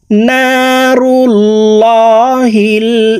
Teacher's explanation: এই লামকে ল অর্থাৎ মোটা করে পড়তে হবে, কারণ আল্লাহ শব্দের আগের হরফে জবর অথবা পেশ হইলে এই লামকে ল অর্থাৎ মোটা করিয়া পড়িতে হয়।